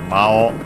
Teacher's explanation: It's worth mentioning that the accent of Mao is actually on the O. Of course not on the U, which is in this case O-U, so long O.